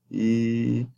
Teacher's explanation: Tense. Again, high front. And then unrounded, tense vowel.